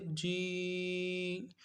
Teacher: جی کھڑی زیر کو بھی ایک الف کی مقدار میں کھینچ لیں